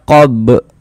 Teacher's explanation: Kemudian di sini ada huruf ba dia sukun. Kita baca qob mantul begitu. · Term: qalqalah